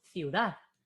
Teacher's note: Entonces, dad tiene la fuerza de voz.